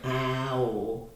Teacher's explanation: So when you say ow, it's the diphthong. Because your mouth changes shape.